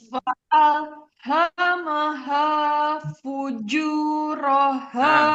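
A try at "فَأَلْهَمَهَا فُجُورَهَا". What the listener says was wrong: Karena ke jimnya juga masih hamas juga. Fuju, juja. Jangan fuju, cu, bukan. Fujuroha. Jahar dia sifatnya.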